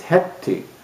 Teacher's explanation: head T but there's a rule in proto and European that a voiced consonant before voiceless consonant loses its voicing so a d would change to a t